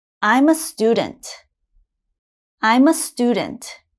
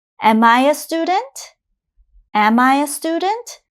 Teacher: Notice my intonation goes up for the question.